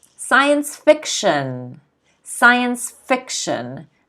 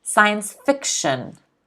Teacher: the stress is on the fiction